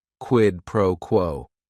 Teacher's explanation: Each word is only 1 syllable. And if you're saying it together, the stress is kind of on that first word and that last word